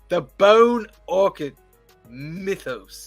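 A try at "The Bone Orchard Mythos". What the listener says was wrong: Orchard. Orchard. Not orchid. Orchard.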